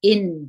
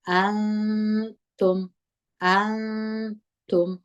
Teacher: د اخفا غونه کوو او نون په غونه کې پټوو